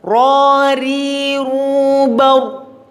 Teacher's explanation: Ketika kasroh tipis ri, ketika dhamma ru mencucu.